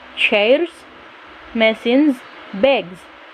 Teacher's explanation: with plural forms if the consonant presenting the s is voiced the s will be pronounced phonetically as a z